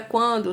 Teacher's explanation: o açaí apenas pela boca na palavra quando também é um ditongo crescente só que não é oral ele é nasal porque o ar sai tanto pela boca quanto pelas fossas nasais